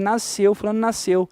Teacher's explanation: E uma vez que esse S não é pronunciado, ele é morto. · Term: dígrafo consonantal